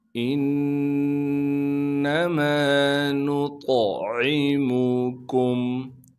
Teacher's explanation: انما نطعمکم، حمزہ کو نون سے ملائیں گے اس لیے کہ نون پر تشدید ہے، اس لیے حمزہ کو ہم نون سے ملانا ہے، یعنی نون کے ساتھ جوائن کریں کے پڑھیں گے۔ نون پر جب تشدید آ جاتی ہے پھر نون میں غنہ کیا جاتا ہے، یعنی ناک میں آواز کو لے کر جائیں گے